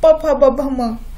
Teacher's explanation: प प ब भ म हा जो असतो तो पूर्ण ओष्ठ्यवर्ण असतो, त्यांचा जो उच्चार करताना तिथे पूर्णपणे ओठांचाच वापर होतो